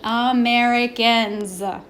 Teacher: the S at the end sounds like a Z